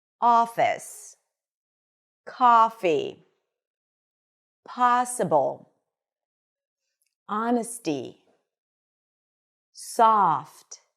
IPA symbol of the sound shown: ɑ